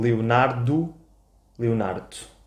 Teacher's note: Quase não pronunciamos o último O.